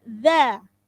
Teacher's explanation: jadi pengucapan huruf dza ujung lidahnya digigit